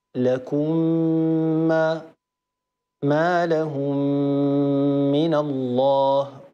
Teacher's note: اخرها من ساكنه من اولها ميم مكسوره طبعا ننتبه الى الغنه الغنه هنا اكمل ما تكون هي في اعلى مراتبها